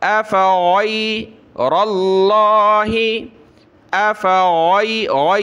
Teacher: गैन को गले से निकाला, अफ़ग़ैरल्लाहि, अफ़ग़ै, इसकी जगह आपने गाफ नहीं पढ़ना, अफ़ग़ै नहीं, अफ़ग़ैरल्लाहि तत्तक़ून।